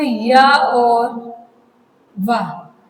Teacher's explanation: इन ध्वनियों के उच्चारण में अवयव में कहीं भी पूर्ण स्पर्श नहीं होता है